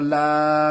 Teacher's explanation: खड़ा ज़बर में 1 अलिफ के बराबर खींचेंगे